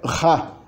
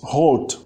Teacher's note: O R no holandês é pronunciado ra. Ele é gutural, ele é pronunciado na garganta quando ele está no começo da sílaba.